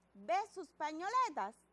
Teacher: es una oración interrogativa la debemos leer entonando en forma de pregunta